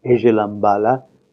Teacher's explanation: a word such as pala is pronounced bala when there is a context that is presented with the nasal before it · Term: rule of voicing